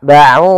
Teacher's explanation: Mad thii yaitu fathah bertemu Alif panjangnya dua harakat